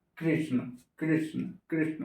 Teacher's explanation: मूर्धा में जिह्वा को सटाइए, फिर बोलिए कृष्ण